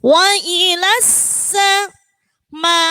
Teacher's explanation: Di situ huruf sinnya ada tasydid maka harus ditekan.